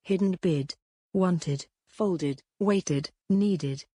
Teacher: Firstly, you have the id sound, if the last letter of the word is spelled with d or t. The ed is pronounced as a separate syllable with an id sound.